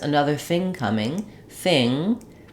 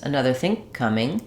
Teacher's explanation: I'm going to stop that ng sound in think and go right to the k of coming. So if you want to be extra clear, you can say two K sounds.